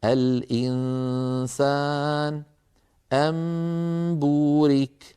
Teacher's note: تكون الغنة كاملة في النون والميم المخفاتين